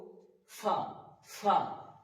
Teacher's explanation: তারপর ফা উচ্চারণ করার সময় আমরা করব ফা উপরের যে সামনেকার দাগ ওই দাগ নিচকার ঠোটের উপরে লাগিয়ে উচ্চারিত হবে ফা এবং একটা বাতাস বেরবে সিটির মত না জাস্ট একটা বাতাস বের উচ্চারিত হবে ফা